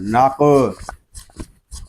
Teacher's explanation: قاف ساکن ہے، اس کو کلکلے کے ساتھ ادا کریں گے. قاف حروف کلکلہ میں سے ہے، اور جب حروف کلکلہ ساکن ہوں تو ان میں کلکلہ خوب ظاہر ہوگا.